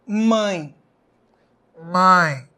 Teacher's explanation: na palavra mãe nós temos o som tentando sair pelo nariz e sendo impedido aqui pela minha mão esse é um exemplo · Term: ditongo nasal